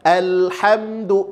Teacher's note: lam itu mengalir tapi tidak sepanjang mengalirnya rohah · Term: tawasud